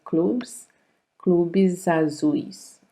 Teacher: a word that ends in S and the next one begins with a vowel, that S becomes Z. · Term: voicing assimilation